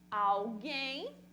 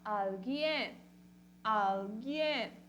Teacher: Na língua portuguesa, uma oxítona. Na língua espanhola, uma paroxítona.